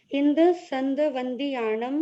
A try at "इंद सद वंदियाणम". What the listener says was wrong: संद नहीं, इंद सद। हाँ, सद माने 100। इंद सद बंदियाणम तिहुवन हेद मधुर विसद वखाणम अंतातीद गुणाणम नमो जिनाणम जिद भवाणम।